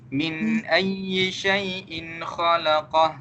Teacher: min ayyi dekat sini dia tak panjang dia satu harakat saja